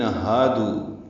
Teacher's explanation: یا بے مد منفصل ہے، ایو حمزہ کو یا سے ملانا ہے، ہا کو الذین کے لام سے ملانا ہے، ذال نرمی سے پڑھنا ہے، دی یا مدہ ہے، ہادو میں ہا الف مدہ ہے، دو واو مدہ ہے۔ ہا اقصی حلق سے ادا ہوگا اور 2 حرکات لمبا کریں گے۔ دو واو مدہ کے بعد حمزہ ہے جس کی وجہ سے مد منفصل آئے گی، حمزہ دوسرے کلمے میں ہے۔